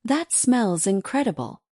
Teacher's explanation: your voice will naturally rise slightly on smells and stretch the first syllable of incredible